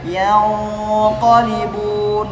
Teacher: Di sini ada ikhfa pada huruf isti'la, maka dibaca tebal dengungnya. Yang qalibun, enggak boleh tipis.